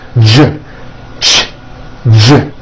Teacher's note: Everything here stays the same. You just add voicing for the J. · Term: voiced